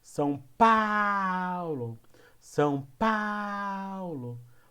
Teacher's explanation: O pá é a sílaba mais forte.